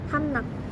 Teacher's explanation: berarti udara harus keluar dari rongga hidung dan mulut secara cepat untuk memudahkan pelafalan bunyi R mengalami nasalisasi menjadi n yang sama-sama berasal dari aliran udara di rongga hidung Selain itu n juga merupakan bunyi yang berasal dari ujung lidah